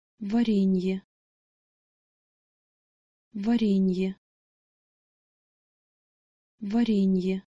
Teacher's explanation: Unfortunately, this word will probably be more difficult for a native English speaker. There is an initial hard V consonant with va, but then the re in the second syllable is soft as opposed to re.